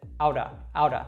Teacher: it's just a very quick flick of the tongue at the top of the mouth